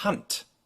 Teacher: a German will pronounce this word, for instance, as Hand, with a t sound at the end. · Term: unvoiced consonant